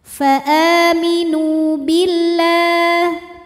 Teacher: lam pada lafaz Allah dibunyikan secara tarqiq karena huruf sebelumnya kasrah, maka bacanya tipis, bunyinya la.